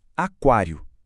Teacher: Em Aquário a gente pronuncia claramente o U. E se o utensom não pode ser dígrafo, tá aí um exemplo perfeito daquela exceção.